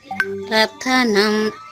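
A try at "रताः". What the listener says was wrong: రథం నా ఉందా అక్కడ రథాహ చూసి చదవాలి రథాహ హితే రథాహ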